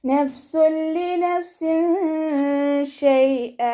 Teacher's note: തെൻവീനിനെ ലാമിലേക്ക് ലയിപ്പിച്ചിട്ട് ഉണ്ണയില്ലാതെ ഓതി കൊടുക്കുക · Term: ഇദാം ബിലാ ഉന്നയുടെ